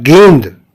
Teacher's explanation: अनुस्वार जो है स्वर के बाद आने वाला व्यंजन है तथा इसकी ध्वनि नाक से निकलती है।